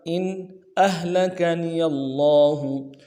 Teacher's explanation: حمزہ کو ہا کے ساتھ ملانا ہے، ہا کو واضح کریں گے. لام کو نرم سے ادا کرنا ہے، کاف کو بھی نرم سے ادا کریں گے، نون کو بھی نرم سے ادا کریں گے.